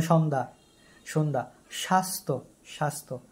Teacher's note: শব্দের মাঝে বা শেষে যুক্ত ব্যঞ্জনের সঙ্গে থাকা জ এর কোন উচ্চারণ হয় না